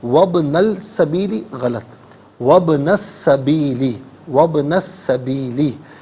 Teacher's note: اور سین حرف شمسیہ ہے. حرف شمسیہ وہ حرف ہے جس پر الف لام ہو اور لام کو پڑھا نہ جائے، تو یہاں پر سین کا ساؤنڈ ہوگا وہ ادا ہوگا